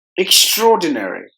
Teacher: there are five syllables in this word and we have to give more volume to the second syllable